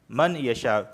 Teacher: ادغام بھی ہوگا غنہ بھی ہوگا۔ من، اصل میں کیا تھا من یشاء، تو ادغام کی وجہ سے ہو گیا من یشاء، میم یا زبر من یشاء، اور یہ مد متصل ہے تو لہٰذا اسے میں 4 الف کے برابر کھینچ کے پڑھ رہا ہوں کیونکہ ایک ہی کلمے میں حمزہ مدہ اور حمزہ واقع ہوئے ہیں۔